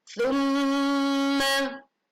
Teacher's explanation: Tsumma, ada pelajaran gunnah, mim bertasydid, maka dibaca mendengung